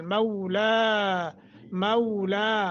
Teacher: فنعمل، فنعمل، فنعمل نہیں ہوتا، فنعمل مولا، مولا، مو جو ہے یہ حروف لین بنتا ہے، تو لا کھڑی زبر ہے، ایک سیکنڈ کی مد کریں گے